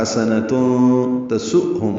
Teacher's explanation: حمزہ ساکن جھٹکے سے ادا ہوگا، یعنی آواز روک کر پڑھیں گے